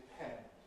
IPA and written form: dɪˈpʰend (depend)